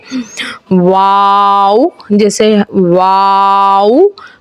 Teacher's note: वाव, ये बोलने में इस तरीके का होता है कि छोटा सा राउंड मुंह का बना के फिर वो बड़ा होता है और आवाज़ पैदा होती है। वाव, जैसे वाव, दोनों होंठों की गुलाई से अदा होता है।